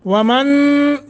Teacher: आवाज़ को नाक की हड्डी, ये खशुमा, इसमें ले जाकर थोड़ा सा छुपा कर, थोड़ा सा लंबा करके पढ़ने को इख्फ़ा कहते हैं